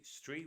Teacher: street with a glottal T, not street, street.